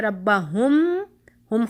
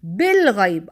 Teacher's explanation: میم ساکنہ کے بعد جیسے ہم پڑھتے ہیں ربا ہم ختم ہو گیا نا، ربا ہم بات ختم ہوگی، لفظ پورا ہو گیا، بالغیب آگے با آ رہا ہے، تو اس پر ہم کیا کریں گے، غنہ، اس کے بیچ میں ہم غنہ کرتے ہوئے ہم حرف با کو ادا کریں گے، ٹھیک ہے۔ اب تو اب بات سمجھتے ہیں کہ میم ساکنہ کے فوراً بعد اگر حرف با آ گیا تو پھر ہم میم کو غنہ کے ساتھ چھپائیں گے، غنہ کرتے ہوئے میم کو چھپائیں گے، اور اس کو اخفاء شفویہ کہا جاتا ہے۔